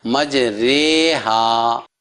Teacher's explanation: لکھنے میں مجری اور پڑھنے میں مجرے ہے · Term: یا مجھول